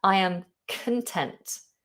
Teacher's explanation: I am content. The stress is on the end.